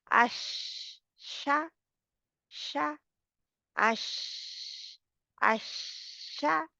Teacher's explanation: तो अब शीन है, तो शीन में ये सिर्फ एक ही लेटर में तफस्सी पाई जाती है, जो कि फैलाव होता है आवाज का। क्या कि इसको अदा करते वक्त आवाज मखरज में फैल कर निकलती है, पहले फैलती है, यानी फैल कर आवाज फिर बाहर को आती है।